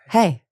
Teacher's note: I am using the lowest end of my natural tone.